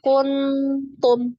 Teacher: ini paling dekat dengan makhrajnya ya jadi bunyinya itu lebih condong ke n ya tapi tidak sampai izhar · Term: ikhfa Adna